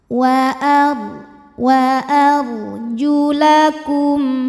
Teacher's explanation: Bi ru'u sikum wa ar ra sukun kita bunyikan secara tafkhim karena ra sukun ini didahului baris fathah. Maka cara bacanya huruf ra kita bunyikan dengan tebal.